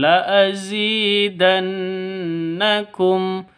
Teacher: Jadi non mati, non sukun, non tasydid berdiri sendiri, gunnah musyaddadah, dengung dua ketukan.